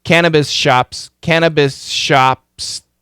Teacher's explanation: all that s and Sh blend together